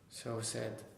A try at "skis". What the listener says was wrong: Z, not said. It ends in the vowel sound. E, skis.